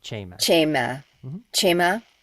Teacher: the emphasis is always on the first syllable